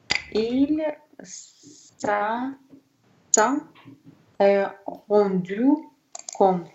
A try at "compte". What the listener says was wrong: Только compte П не читаем, П перед Т не читается. Compte. Compte. Там просто П не читаем.